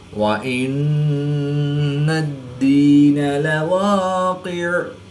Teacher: یا ساکن سے پہلے دال کے نیچے زیر ہے تو یا مدہ، ایک الف میں 2 حرکات کے برابر کھینچ کر پڑھیں گے